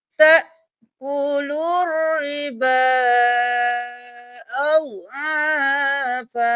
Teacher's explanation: اس کو ہم 4 الف کے برابر کھینچیں گے. ربا کھینچتے ہوئے با کو 4 الف کے برابر بس کر دیں گے